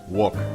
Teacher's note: reduction of the R. So work becomes wook.